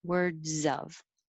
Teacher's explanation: Make your Z connect, words of.